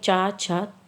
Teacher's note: च छ बोलने में ये जो जिह्वा है वो आपकी तालु को स्पर्श करती है